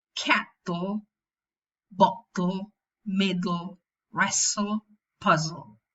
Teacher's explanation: In what contexts is the lateral syllabic? When it's preceded by alveolar consonants. For example, cattle, bottle, middle, wrestle, puzzle. · when it's syllabic, it's dark because it has velarized resonance. It resonates at the back.